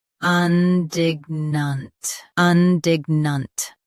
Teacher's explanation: Both US and UK have the same pronunciation of this word. Stress dig, keep un soft, and finish nunt clearly.